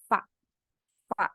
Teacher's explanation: Fa. Jadi gigi atas menyentuh bibir bawah. Nah, bunyinya cuma angin aja keluar dari sela-sela gigi. Pita suara kita nggak bergetar.